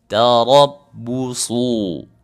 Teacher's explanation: Tarabbusu itu huruf ra, huruf dibaca tebal karena berbaris fathah. Huruf su, huruf shad berbaris dhammah, dibaca tebal juga.